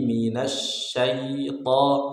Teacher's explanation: Billahi minasyaito, syai tipis, to tebal